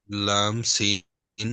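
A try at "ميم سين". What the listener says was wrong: না, প্রথমটা তো লাম নয়, প্রথমটা তো মিম, কারণ এখানে যে সিনের পরে কি দিয়ে বলেছিলাম মিম, এখানেও মিম, ঠিক আছে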